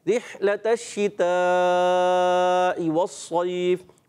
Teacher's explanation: और ता को मोटा नहीं करना, ये भी ख्याल करें